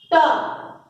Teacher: चा, तो चा का उच्चारण तालु से हो रहा है। टा, टा हमारे मूर्धा भाग से उच्चारण हो रहे हैं